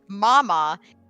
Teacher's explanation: with the m sound in like Mama you have uh air coming through your nose we call that a nasal